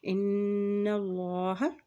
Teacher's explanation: जब नून के ऊपर शद आती है तो वहाँ पर गुन्ना भी अदा किया जाता है, इसलिए यहाँ पर गुन्ना अदा करेंगे।